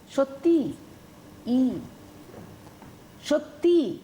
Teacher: শব্দের শেষে স্বরধ্বনির আগমনটা ঘটছে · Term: অন্ত স্বরাগম